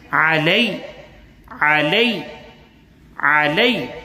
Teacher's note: یا ساکن سے پہلے زبر ہے تو یا کو جو ہے سافٹ کے ساتھ ساتھ بغیر کھینچے پڑھیں گے. انداز ہمارا سافٹ ہوگا اور یہ ہے کہ کھینچے بغیر پڑھیں گے. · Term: حروف لین